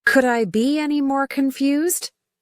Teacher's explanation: Chandler would say, emphasizing the be.